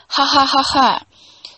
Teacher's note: So, for example, you find nasality in post laughter.